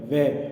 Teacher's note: आप देख लोगे आपका दांत ऊपर वाले होठ को वह बोलते वक्त टच करता है, यानी कि ये दंत्योष्ठ्य है।